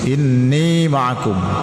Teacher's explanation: Ini wajibul gunnah, artinya dibaca wajib berdengung ya, dengungnya dipanjangkan 2 harakat sudah boleh ya.